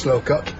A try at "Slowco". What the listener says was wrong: Slowco. The final plosive is silent.